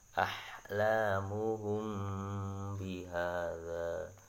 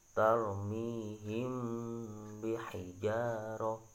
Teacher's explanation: Yaitu dengan menyamarkan bacaan mim sukun itu dengan disertai berdengung. Jadi mimnya disamarkan terus berdengung ya. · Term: ikhfa syafawi